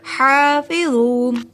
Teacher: حلق کے درمیان حصے سے ادا ہوتا ہے یہ حلوے والا حا · فا کو ادا کرنے کے لیے اوپر والے سامنے والے دانتوں کو ہونٹوں کے درمیان میں لگائیے